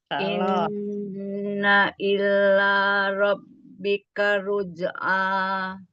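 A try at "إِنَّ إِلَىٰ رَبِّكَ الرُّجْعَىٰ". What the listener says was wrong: Jangan ilnya jangan pakai tasjid.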